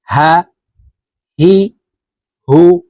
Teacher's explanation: হার উচ্চারণ হলুকের শুরু থেকে পড়বো